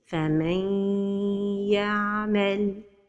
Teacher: In the case of idgham of noon saakinah with the letter ya, the idgham is with ghunna.